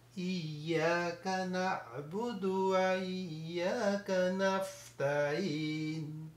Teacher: اور نون کو ادا کرنا ہے، اور سین کو وفلنگ ساؤنڈ سے کرنا ہے، تا کو لائٹ پڑھنا ہے، اور این جو ہے اس میں ہمیں مد عارف وقفی ہوگا.